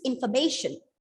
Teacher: the second syllable and the fourth syllable are reduced to the shortest schwa sound